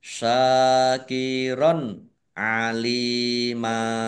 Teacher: harakat syakiron alima syin fathah Alif Mad Thobi'i panjang dua harakat fathah tanwin bertemu dengan huruf Ain bacaan izhar dibaca jelas lam kasrh Ya Sukun Mad thi'i panjang dua harakat fathah tanwin